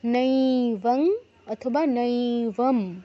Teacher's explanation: তারপর নৈবন নৈবম বলতে পারেন বা নৈবং বলতে পারেন, দুটোই গ্রহণযোগ্য। নইতে দীর্ঘ করতে হবে, নৈবং অথবা নৈবম।